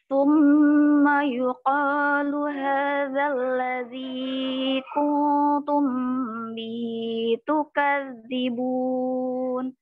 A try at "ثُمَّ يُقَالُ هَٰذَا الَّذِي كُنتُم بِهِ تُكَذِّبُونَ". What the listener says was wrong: Nah, coba perhatikan huruf H-nya deh, yang Bunda baca. Yang haza dengan yang bihi. Summa yuqalu hadza. Tapi giliran masuk ke huruf H yang di bihi, allazi kuntum bihi bihi beda.